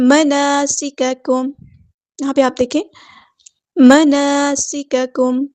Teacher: یہاں پہ آپ دیکھیں مناسککم، یہاں پہ ہمیں 2 کاؤنٹ لمبا کرنا ہے، سین کی سیٹی ہمیں واضح ادا کرنی ہے، کاف باریک لائٹ لیٹر ہے، میم ساکن پہ یہاں پہ اظہار شفوی ہو رہا ہے، ٹائم نہیں دینا